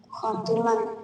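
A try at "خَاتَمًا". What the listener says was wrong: Apa ti? Ti. Yang benar tam. Khotaman. Kalau khotim penutup. Kalau khotam cincin. Khotiman menjadi khotaman.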